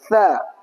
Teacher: huruf tsa dza sama d makhrajnya ujung lidah sedikit keluar ya. Tsa sedikit keluar dza ujung lidah sedikit keluar sama d ujung lidah sedikit keluar.